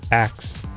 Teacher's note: In the non-standard pronunciation of ask as axe, the two consonants C and S gets switched. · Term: metathesis